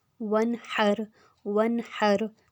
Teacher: نون پہ جزم اور آگے ہا آ گیا ہے تو یہاں پر بھی ہم نے غنہ نہیں کرنا